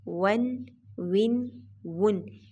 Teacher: ہونٹوں کو واو کو ادا کرتے وقت بالکل گول کیا جائے گا